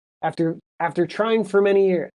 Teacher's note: the word for gets squished to almost just like an FR sound